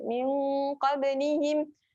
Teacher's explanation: Ba yang bertanda sukun. Qalqalah sughra. Lantunan yang perlahan, lantunan kecil.